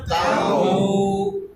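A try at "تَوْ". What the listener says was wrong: না বেশি লম্বা হয়ে গেল নরম হবে একটু লম্বা হবে কিন্তু তা না এটা মাদ হয়ে গেল এত লম্বা করা যাবে না যেটা এটা মাদ হয়ে যায় তারপর এটা টি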